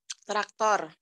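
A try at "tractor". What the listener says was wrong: Not traktor. A-nya jadi E. Jangan traktor ya. Traktor tuh bahasa Indonesia. Kalau kita orang Indonesia ngomongnya traktor ya.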